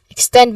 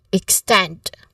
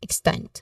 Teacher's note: Now, pronunciation wise, we focus on the word extend, which has a short a short E sound, an initial E sound, extend. Now, second syllable is the stressed syllable here, extend.